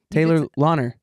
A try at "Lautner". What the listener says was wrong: No. There's still a T in it. It's Lautner.